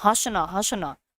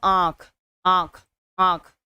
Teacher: और मुंह से दोनों तरफ से उच्चारित किया जा रहा है नाक और मुंह दोनों से उच्चारण हो रहा है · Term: अनुनासिक